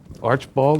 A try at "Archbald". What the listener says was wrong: There's no I.